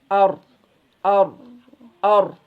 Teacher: Kalau ro itu [berdehem] jadi si suaranya itu mengerucut keluar dari tengah-tengah. Jadi ro itu sebetulnya ketika kita lafazkan itu di tengah-tengahnya itu ada ada celah sedikit.